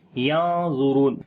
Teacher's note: نون ساکن کے بعد وا گیا، اخفا کریں گے، موٹا اخفا ہوگا